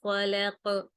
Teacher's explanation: جو خلق ہے اس میں قاف پر کبیرہ قلقلہ کیا ہے، کیونکہ قاف حرف کے آخر میں آ رہا ہے، ٹھیک ہے، اور سکون ہے اس پر، تو قاف پر، اور جو ڈنڈے والی کاف ہے اس پر قلقلہ نہیں ہوگا۔